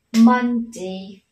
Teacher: dấu trọng âm sẽ nhấn vào âm tiết đầu tiên